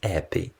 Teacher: The most well-known feature of Cockney, that was first marked by the scholars in the 18th century, is H dropping. The letter H is most often silent. Thus, happy is pronounced as appy.